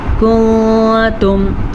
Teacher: میں نے جناب نون کو چھپا کے پڑھا ہے